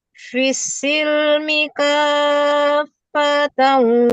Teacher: panjangan K-nya dulu baru ditasdidkan ke fa.